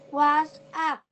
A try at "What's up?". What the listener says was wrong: Yes, correct. But read faster. What's up? Yes, what's up is correct. Now, but what's up?